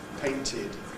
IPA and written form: ˈpeɪntɪd (painted)